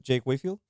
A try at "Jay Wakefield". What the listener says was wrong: Yeah, Jay Wakefield. It's not Jake. It sounds like you said Jake.